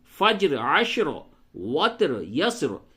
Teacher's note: فجر، عشر، وتر، یسر، یہ ان کی را کو حالت وقف میں پڑ پڑھیں گے